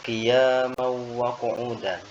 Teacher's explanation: idgham bighunah artinya idgham yang didengungkan sebabnya karena tanwin bertemu dengan huruf wau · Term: idgham bi gunnah